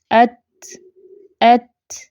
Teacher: इसमें आवाज रुक जाती है लेकिन सांस जारी रहता है सांस नहीं रुकता लास्ट प आपको कम जोर सी आवाज सुनाई